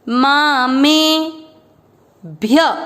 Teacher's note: भय नहीं बोलना, आधा भ है ना